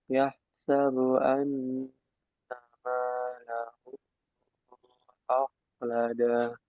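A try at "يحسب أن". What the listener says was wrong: Haknya alirkan. Yah sabu, yah sabu an.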